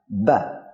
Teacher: Bila kita ingin mengeluarkan Ba, maka kita mengarahkan nafas kita ke pita suara, kemudian kita arahkan ke dua bibir kita rapatkan, kemudian kita lepas, maka akan muncul suara Ba. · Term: huruf Ba